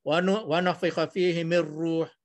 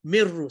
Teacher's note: Dia terus nun mati tu dah tak ada dah, hilang tu. Mir ruh. Seolah-olah kita aja mim bagi di bawah mi, dia dimasukkan terus dalam ra, sabdu bagi di hadapan.